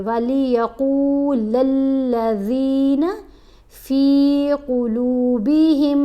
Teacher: قاف کو موٹا بھی پڑھیں گے اور لمبا بھی پڑھیں گے